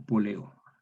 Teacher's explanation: Polillo, entonces queda poleo. Se perdió, entonces, la Y tras vocal análoga.